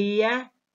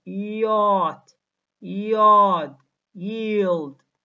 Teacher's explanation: vocal cords are vibrating yeah is palatal place of articulation because it is produced when the front of the tongue is raised up in the mouth almost touching the hard palate yeah is a glide because it is produced with a quick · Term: voiced palatal glide